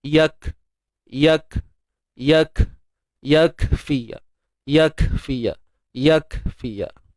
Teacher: Untuk kaf, tuan-tuan dan puan, matikan dia dalam keadaan tahan dulu suara, syiddah. Yak, tahan dulu.